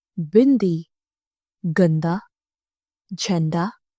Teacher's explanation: अनुस्वर बोलते समय हवा नाक से निकलती है।